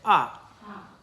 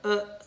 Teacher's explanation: One is when yeah one is open the other is closed. First one is ah we open but the second one is we close. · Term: short a